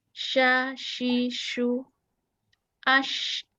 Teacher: udara menyebar di mulut sifatnya dia tafasyi jadi menyebar di mulut